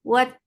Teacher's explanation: Ta will get sifat of shiddah. There will be no flow of sound. Wat. Ta, for fatha open jaws, the sound is short.